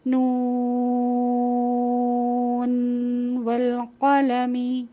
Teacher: نون کے بعد بھی واو آ رہا ہے، اس کو بھی ہم اگلے حرف سے نہیں ملائیں گے بلکہ ظاہر کر کے پڑھیں گے